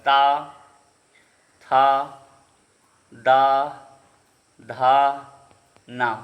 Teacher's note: न आता है त वर्ग में और त वर्ग किसका होता है? दंती का होता है। ता थ द धा न वर्ग का पंचमा अक्षर है तो दंती हो जाएगा।